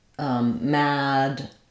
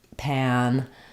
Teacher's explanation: the n sound makes the ah a little bit more nasalized, a little bit more closed. You don't have to intentionally make a different vowel here though.